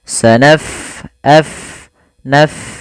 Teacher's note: Pada lafal bacaan sanafrugu, fa-nya kita alirkan nafasnya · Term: huruf fa